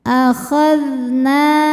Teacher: Hati-hati zal tidak boleh memantul ya. Zal ini dari segi suara sifatnya rokhawah, jadi suaranya dialirkan.